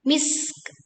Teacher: kita tekan huruf sin. Alirkan nafasnya. Alirkan suaranya, lalu kita tutup dengan bunyi kaf yang diwakafkan